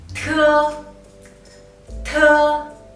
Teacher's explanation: Te is an alveolar initial and the aspirated sound. The only difference between te and de is that when you pronounce te, the airflow is much stronger in your mouth.